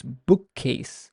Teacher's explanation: The k sound is stressed, is prolonged.